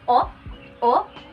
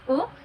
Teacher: It is a closed mid-rounded vowel. So instead of U, it's O.